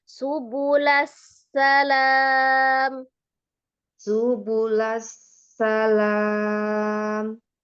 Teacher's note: Disambungkan antara sin sukun dengan sin fathahnya dengan sifat roghahnya ya. Suaranya dialirkan, nafasnya dialirkan, ada hembusan nafasnya, kemudian dia ada as-safir, desisan di sinnya. · Sin tasdid, ada sin sukun, ada sin fathah. Nah, sin fathahnya jangan naik. Sejajarkan dengan sin sukunnya. Disambungkan antara sin sukun dengan sin fathahnya dengan sifat roghahnya ya.